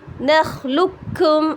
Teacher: اس کی ہم ایسے نہیں پڑھیں گے نخلقکم, لقکم نہیں پڑھا جائے گا, اس لیے کہ یہاں پر قلقلے کی صفات ڈراپ ہو جائیں گی · قاف کو نہیں پڑھا جائے گا بلکہ اس میں کاف میں مرج ہو جائے گا